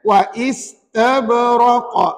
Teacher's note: Ada 2 G. Yang pertama, qalqalah sughra pada huruf ba-nya. Yang kedua, raqa. Qalqalah kubra, hurufnya qaf.